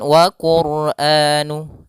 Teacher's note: pada lafal RO di sini ro tebal tafim